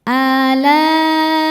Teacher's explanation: Laa maka huruf lam nya ini tidak boleh dibaca panjang dua harakat melainkan kita baca panjang lebih dari dua. Boleh empat, boleh lima harakat. · dibaca secara tafkhim karena berharokat di atas, yaitu fathah. Cara bacanya ditebalkan. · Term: mad wajib muttasil